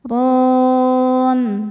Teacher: Mad thabi'i-nya alif didahului fathah, huruf yang disukunkannya mim. Maka ra-nya panjang, boleh dua atau empat atau enam harakat asal konsisten dalam satu kali baca. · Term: mad arid lisukun